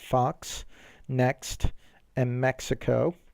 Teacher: it sounds like a k and an s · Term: ks sound